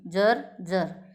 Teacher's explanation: दंतमुलीय म्हणजे दात जे आहेत ना, या दातांच्या मुळाशी जीभ लागल्यानंतर जो उच्चार होतो, म्हणजे उच्चार करताना जिभेच्या टोकाचा वरच्या दातांच्या मुळांना स्पर्श होतो, वरच्या दातांच्या मुळांना स्पर्श होतो, तेव्हा तो उच्चार दंतमुलीय मानला जातो.